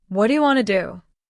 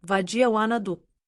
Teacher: Notice how what do you became wadia and want to became wanna.